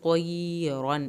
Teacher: طا کو پر کر کے پڑھنا ہے